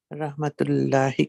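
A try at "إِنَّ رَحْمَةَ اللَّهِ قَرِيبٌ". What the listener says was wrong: Rahmatallahi, not rahmatullah. Rahmatallahi.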